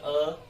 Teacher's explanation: अ, ओष्ठ की स्थिति बिल्कुल भी गोलाकार नहीं बनती, अतः हम इसे वृत्ताकार नहीं कह सकते हैं, तो इसको नहीं रखेंगे वृत्ताकार में, हम नहीं रखेंगे।